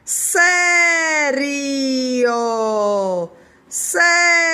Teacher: Começa com a boca fechada e depois aumenta, porque nós temos a semivogal, depois a vogal. O I é a semi e o O é a vogal.